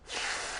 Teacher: The F sound, voiceless, is just air.